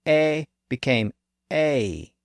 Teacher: to pronounce this sound with a little Glide at the end to pronounce the a sound with a little e at the end